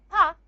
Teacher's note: we produce the sound pa by stopping the air completely using the lips. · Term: a stop